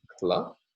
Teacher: there are some segments preceding the plus syllabic segment a voiceless velar stop and a lateral approximant so in this case we have made complex onset the onset